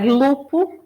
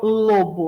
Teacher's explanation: Esse P que virou B passou ali por um processo de sonorização